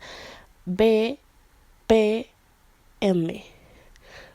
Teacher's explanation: los labiales que es cuando los labios se juntan